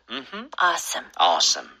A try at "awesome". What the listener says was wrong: 이거는 앞에 강세를 좀 많이 주셔서 awesome 하지 마시고 뒤에 some처럼 힘이 좀 빠졌으면 좋겠어요.